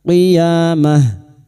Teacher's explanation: Mah tak marbutah yang dibaca waqaf maka bunyinya ha